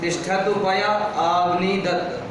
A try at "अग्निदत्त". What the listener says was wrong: अग्निदत्त हिंदी की तरह बोल रहा है, अग्निदत्त लिखा है, क्या लिखा है? अग्निदत्त, ये पूरा है ना आकार जी? हाँ, अग्नि आकार पूरा है ना जी?